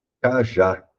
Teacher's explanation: sílaba forte é a última sílaba ou seja tem uma oxítona